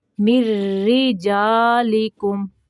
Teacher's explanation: یہاں میم جو ہے اس کو را کے ساتھ ملانا ہے اور را کو باریک پڑھنا ہے